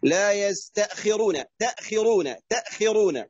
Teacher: لا تفصل بين التاء والهمزة، صلها جميعا، ما تأخذ فيها هنا سكت أو نفس